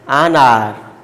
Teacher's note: Though the word is beginning with the H, but H is silent here. Mind it, the word beginning with the silent H.